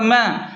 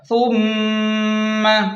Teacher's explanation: میم مشدد ہے تو غنہ لازمی ہوگا